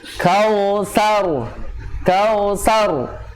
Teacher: Jadi terlalu tebal, terlalu bulat, akhirnya R-nya takrirnya hilang. Seharusnya tetap ada sifat takrir yang ada pada huruf ro-nya.